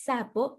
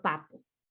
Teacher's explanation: Nuestro paciente sustituye el lingo alveolar fricativa sordo por el bilabial oclusivo sordo